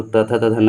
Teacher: दांत में जाइएगा तो त थ द ध न हो गया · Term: दंत ध्वनियाँ